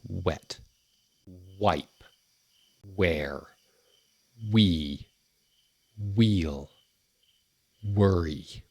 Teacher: That W sound is produced by rounding your lips together as if you're making a kissy face like this or about to whistle, but without touching your teeth. So, you push them away from your teeth and you glide the sound out.